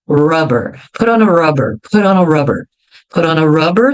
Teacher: vejam como os R sempre são bem Enrolados não importa onde eles seja no começo da palavra ou no